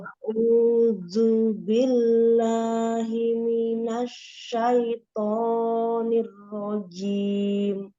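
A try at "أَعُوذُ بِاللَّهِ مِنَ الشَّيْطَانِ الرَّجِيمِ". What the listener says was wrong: Masih belum ketemu makhrajnya ya huruf dalnya, nanti dipelajari lagi insyaallah.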